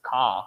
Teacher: you don't have this R sound, the rhotic sound in the end of the word